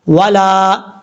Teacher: ولا لام کے آگے الف ہے, ایک الف کی مقدار اس کو لمبا کر کے پڑھیں گے.